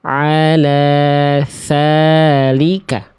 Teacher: Yang B salah karena huruf zalnya keluar udara, keluar angin. Alhasil ya dia berubah menjadi huruf sa.